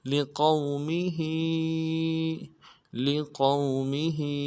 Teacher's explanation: لام سے ادا کریں گے، لقومی، ہا کو کھڑی زیر ہے، ہا کے نیچے کھڑی زیر کو ایک الف دال میں کھینچیں گے